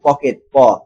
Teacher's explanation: এই প হচ্ছে অঘোষ অল্প প্রাণ